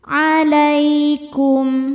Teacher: Lai ada hukum harfulin sebab ada ya sukun sebelumnya baris fathah. Cara bacanya cukup dilembutkan atau dilunakan.